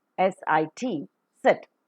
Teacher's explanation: off the nasal passage of air and in the oral cavity the tip of the tongue comes very close to the upper teeth or the alveolar ridge to form a narrow space through which the air that is coming out from the lungs